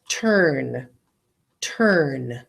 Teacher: I don't hear a vowel, do I? The R is so strong.